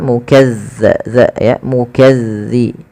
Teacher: Kemudian balafal mukazzibin, langsung ke ya, zalnya ditekan